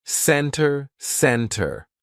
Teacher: So, let's look at the silent T. Usually, if the T comes after an N, we drop that T and we do not pronounce it.